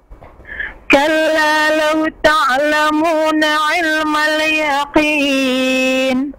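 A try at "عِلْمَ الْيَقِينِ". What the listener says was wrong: Ilmal yaqin, jangan ilma langsung.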